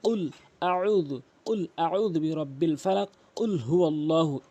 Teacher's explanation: অফ হরফটি ধাক্কা দিয়ে জিহ্বার গোড়া উপরে তালু থেকে উচ্চারণ করবেন